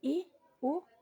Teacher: berdasarkan tinggi-rendah vokal dibagi menjadi tiga yaitu vokal tinggi misalnya ih uh